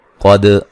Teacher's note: قاف کو موٹا ادا کریں گے، دال پہ قلقلہ ہے